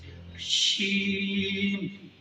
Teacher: د شین لفظ چې کله ادا کوئ نو د دې نه به د سیټۍ اواز وباسئ